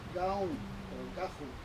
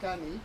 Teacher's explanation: you get G after a vowel and K after a consonant. So you get a K, G alternation. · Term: voicing in copula